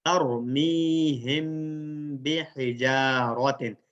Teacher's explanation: اخفا کر رہے ہیں یہاں پر، گویا کہ ہم غنہ کر رہے ہیں